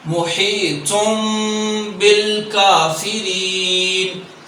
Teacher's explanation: نون تنوین اور نون ساکن کو میم میں تبدیل کر کے پڑھا جاتا ہے